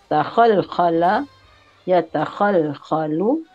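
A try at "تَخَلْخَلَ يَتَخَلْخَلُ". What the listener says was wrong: Iya, bagus. Selamat, alhamdulillah.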